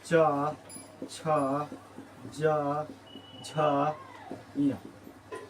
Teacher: ये जो है च वर्ग ये जो बोला जाता है तालु से